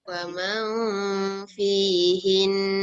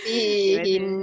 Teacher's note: Dia punya hin dia tu 2 harakat.